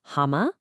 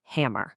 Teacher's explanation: in the UK you might hear hama without that hard R, but over in the US you get that strong R sound